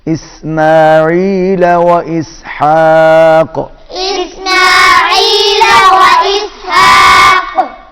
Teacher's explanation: عین بھی حلق میں صدا ہوگا اور حا بھی حلق میں صدا ہوگا